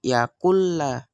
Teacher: Artinya itu adalah nun sukun di sini itu tidak perlu kita baca, tetapi langsung masuk ke huruf lamnya, sehingga lamnya di sini itu dikasih tasjid atau double, sehingga nunnya ini tidak perlu dibaca, langsung masuk ke lam, langsung yakulla. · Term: idgham bilahuna